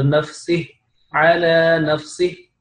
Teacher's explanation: جب اس کو یہاں پہ آپ نے سٹاپ کرنا ہے تو پھر آپ نے نفسی پڑھنا ہے، نفسی لمبا نہیں کرنا